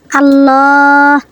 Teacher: তাহলে লামে আল্লাহ ডাইনে জবর, লামে আল্লাহ মোটা